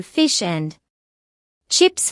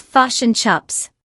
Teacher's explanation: NZ English also developed a globally recognized sound. Short I sounds like u